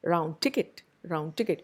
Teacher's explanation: In total, a phonemic assimilation would be a total assimilation. You have the d changing entirely and becoming t.